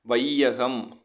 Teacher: முதல்ல ஐகார வார்த்தை வந்துச்சுன்னா 2 மாத்திரையிலேருந்து 1.5க்கு குறைஞ்சி ஒலிக்குது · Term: ஐகார குறுக்கம்